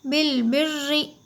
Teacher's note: रा के ऊपर तशदीद होने की वजह से रा को थोड़ा सख्ती से भी हमें पढ़ना होता है